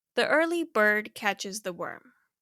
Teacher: The assonance is coming from the repeat “ur” sound.